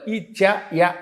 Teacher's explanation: ఇచ్చు యశానాం తాలుహు తాలవ్యంతో పలకాలి